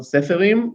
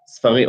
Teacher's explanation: So the plural is not seferim, but sfarim, or seferim, but sfarim. So we have deletion of the first vowel, a change of the second vowel.